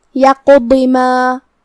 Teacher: کلمت یقض میں یہاں حرف القاف ہے اور اس پہ جزم ہے، تو ہم قاف کو بھاری آواز میں پڑھیں گے اور اسے قلقلہ سے ادا کریں گے، مطلب قاف کو ہلاتے ہوئے یہ کلمہ کو پڑھیں گے.